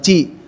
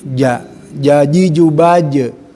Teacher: kuat tekanan antara lidah tengah-tengah ke langit-langit atas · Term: huruf qalqalah